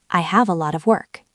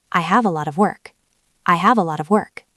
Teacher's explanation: Lot ends in t. of starts with a vowel. That's a flap t.